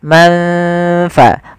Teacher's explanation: membaca suara nun di antara keduanya, di antara izhar dan idgham. Maka samarkan ke huruf fa. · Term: ikhfa